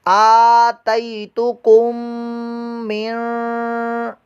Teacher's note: तो काफ हरूफ इख्फा में से है, लिहाजा यहाँ पर इख्फा का कायदा होगा। हम नून को पोशीदा करते हुए छुपा कर यहाँ पर गुन्ना करेंगे